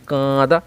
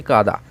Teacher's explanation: এই যে আমাদের নাক উচ্চারিত হচ্ছে না, আমাদের নাক এখানে কি হচ্ছে, এই যে উচ্চারণে কাঁদা, এই আয়ের সঙ্গে চন্দ্রবিন্দু উচ্চারণে আমাদের নাক কিন্তু সাহায্য করছে, মুখ্য ভূমিকা রাখছে। সেই জন্য এটা হলো সানুনাসিক স্বরধ্বনি।